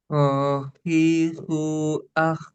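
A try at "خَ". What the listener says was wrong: Khi, ada kotornya sedikit. Khohi, khu, ah.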